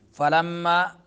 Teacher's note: मीम मुशद्दद है तो गुन्ना होगा